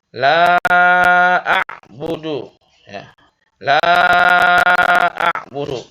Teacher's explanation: Panjangnya ya 5 harokat atau 5 ketukan. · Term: mad jaiz munfasil